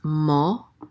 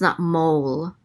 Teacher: the Hebrew holum it's not quite the same as an English O It's Not O it's like shorter the shorter sound than that